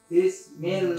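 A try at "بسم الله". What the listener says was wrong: Jangan bis, bukan bis. Bis, apa bis? Bis. Jangan tolakan pertamanya tuh enggak pas, enggak enak. Keras tuh tolakannya. Cari yang empuk. Jangan bismillah bi. Bi.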